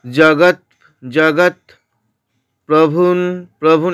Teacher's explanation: তারপরে বলেছে কি জগৎ জগৎ প্রভুন, প্রভুন এখানে অনুস্বরটা দন্তন্যয়ের মতো শোনাবে, অর্ধেক দন্তন্য